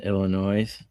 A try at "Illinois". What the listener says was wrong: You don't pronounce the S in Illinois.